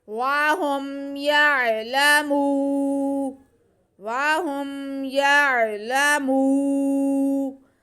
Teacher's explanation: یہ واو مدہ ہے، میم کے بعد کو کھینچیں گے